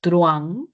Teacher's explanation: Entonces parece que fueran dos, pero en realidad no lo hay, porque la mayor fuerza de voz de la vocal abierta hace que la vocal cerrada se una en un diptongo. Si es que no tuviera la mayor fuerza de voz la vocal abierta, entonces ahí sí se separarían en dos sílabas.